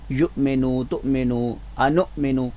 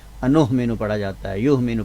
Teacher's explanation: حمزہ کے اوپر جب بھی جزم آتا ہے تو اس کو عموماً دیکھا گیا کہ وہ ہا کی آواز میں پڑھ دیا جاتا ہے ، یعنی فاہتو پڑھا جاتا ہے، انہمنو پڑھا جاتا ہے، یہمنو